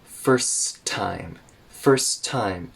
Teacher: it was the first time now here we'll connect first time connect both T's together so it's just first time